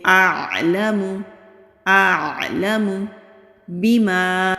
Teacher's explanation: لام کے اوپر زبر ہے، جلدی پڑھیں گے، کھینچیں گے نہیں